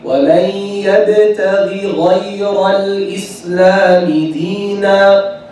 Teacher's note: The first ghain is less heavy than the second. Why? Because it has kasra, less heavy.